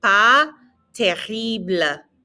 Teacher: Lots of good pronunciation practice here. Again, that S is silent and the R is in the back of your throat.